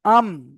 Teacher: মিম দুই ঠোটের শুকন অংশ মিলিত হয়ে উচ্চারিত হয়।